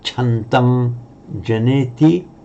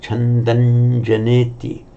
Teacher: So written separately, chandam janeti, but pronounced in running speech, that final subdot, the final ng sound, you'll hear it most often pronounced as an n, in exactly the same position that the following j comes out. So chandanjaneti.